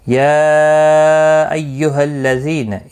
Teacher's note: یا مد منفصل ہے، 3 الف کی مقدار کے برابر کھینچ کر پڑھیں گے